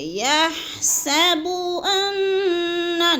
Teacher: نون مشدد ہے، سختی سے جماؤ کے ساتھ بھی پڑھنا ہے اور اس کو لمبا بھی نہیں کرنا کیونکہ اس کے اوپر زبر ہے۔